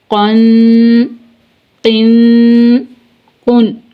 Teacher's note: گنہ نہیں کریں گے بلکہ اظہار کریں گے